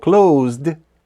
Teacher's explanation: тут дій вимовляється дзвінко тому що попередній звук перед і він так само дзвінкий